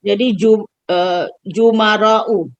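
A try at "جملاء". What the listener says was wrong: Lam, bukan ro.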